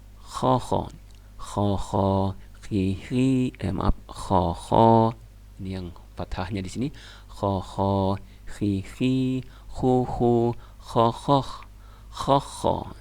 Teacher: Berikutnya huruf kha itu naik ke atas seperti ada duri nempel di tenggorokan atas, kita keluarin kha. Nah, kha jadi agak dia lebih ke belakang, kha tapi paling atas